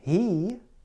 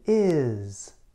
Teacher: Your tongue is high toward the front of your mouth for both sounds.